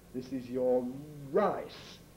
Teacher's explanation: i have the habit as many people do of lip rounding initial r